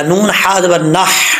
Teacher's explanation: नून के बाद जो हा आ रहा है ये हा बरीक है, इसका ताल्लुक जो हल्क मुंह की तरफ है उसके साथ है तो इसको बरीक पढ़ा जाएगा